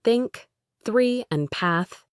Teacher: English has two of these, the unvoiced th sound, theta, as in think, three, and path